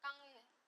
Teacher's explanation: 그 다음에 니은과 만나서 기역이 이응이 된다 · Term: 비음화